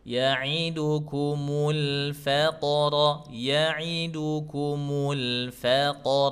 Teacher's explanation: Qalqalahnya diringankan. Jangan berat-berat. Bukan faqro.